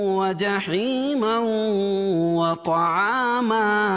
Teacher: تنوین کے بعد ادغام مع الغنہ کے 4 حرفوں میں سے واو آ جائے گی تو یہاں غنہ ہوگا